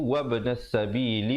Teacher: Wab ada pantulan di situ, ya. Pastikan di situ ada qalqalah di situ.